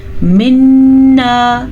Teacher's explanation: منا نون کے اوپر شد ہے تو نون پہ غنّہ لازمی ہے